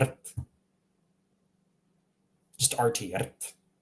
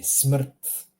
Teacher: Where's the vowel, you say? Well, the R is the vowel.